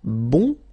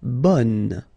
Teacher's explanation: the sound is changing quite much, because here you've got this nasal, bon, okay, and then bonne, okay, bon, bonne.